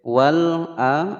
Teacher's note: Fissamawati, tinya pendek. Wal a, ada al qamariyah dibaca jelas, tidak boleh dipantulkan